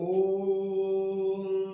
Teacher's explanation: ओ को 3 मात्रा के बराबर बोलिए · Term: प्लुत स्वर